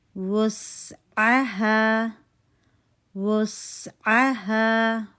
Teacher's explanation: سین سیٹی کی آواز آ رہی ہے, پتلا حرف ہے, زبان سیدھی رہے گی